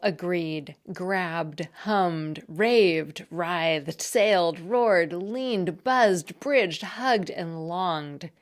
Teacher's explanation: That's because usually the ed suffix is just pronounced as a d or t at the end of the last syllable of the word it gets suffixed to. It's pronounced as a d when the base word ends in a vowel or a voiced consonant.